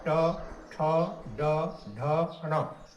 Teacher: जब हम बोलते हैं ट तो जीव मूर्धा को स्पर्श करके हवा को जो है रोक लेता है जिससे ये उच्चारित होने लगता है। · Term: ट वर्ग